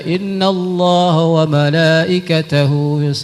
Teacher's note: seharusnya madnya panjang tapi dipendekkan